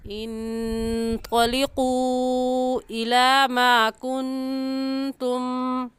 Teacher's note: کن کے نون ساکن پر غنہ کریں گے، کیونکہ نون ساکن کے بعد حروف حلقی میں سے کوئی لفظ نہیں ہے۔